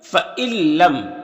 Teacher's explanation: فَإِلَّمْ جو ہے اصل میں یہاں پر نون بھی تھا تو نون حذف ہو گیا ہے اور اس کو اس طریقے سے لکھا، تو یہاں پر نون ساکن کے بعد لام حروف یرملون میں سے، تو اس کو ملا کر بغیر غنہ کے پڑھیں گے، اس کو ادغام تام کہتے ہیں۔